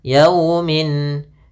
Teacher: lafal yau ada fathah bertemu sukun, ini bacaan lin lembut dalam pelafalannya